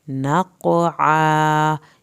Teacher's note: یہاں پر قاف پہ آپ نے قلقلہ کرنا ہے، قاف کو پر کر کے پڑھنا ہے، عین کو حلق سے ادا کر کے الف اٹیچ الف کو پورا کھینچنا ہے۔